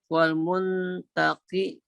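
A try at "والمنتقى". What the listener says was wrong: Muntaqo. Wal muntaqo. Kalau wal muntaqi seharusnya ada huruf ya titik 2. Ini enggak ada.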